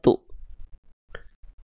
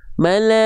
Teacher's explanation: Nah, jangan lupa percikan nafasnya tu.